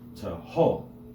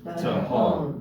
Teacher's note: an example of a Hebrew word accented on its last syllable. Tahom.